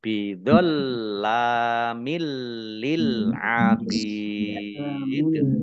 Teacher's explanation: Lamnya dibaca double tetapi tidak mendengung